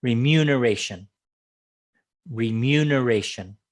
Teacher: Remuneration. Second syllable stress, remuneration